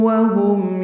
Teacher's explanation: وہم میم ساکن پہ اظہار شفوی ہے